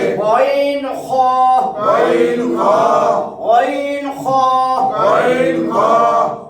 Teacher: 3 নম্বর মাখরাজ হলকের শেষ ভাগ হইতে